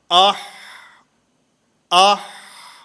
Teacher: حلق کے درمیان سے ہا ادا ہوتا ہے